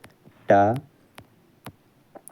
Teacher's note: मूर्धन्य अल्प प्राण अघोष वर्ण का उदाहरण है।